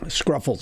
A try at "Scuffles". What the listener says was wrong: There's no R, it's Scuffles.